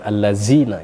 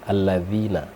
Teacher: dzal itu di ujung lidah menyentuh gigi, alladzina bukan allazina